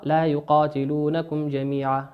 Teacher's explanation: الميم في لا يقاتلونكم هي ميم ساكنة أتى بعدها حرف الجيم، والجيم من حروف الإظهار، تقرأ لا يقاتلونكم جميعا هكذا ساكنة مظهرة، ولا يدخل فيها أي عملية إدغام أو إقلاب أو إخفاء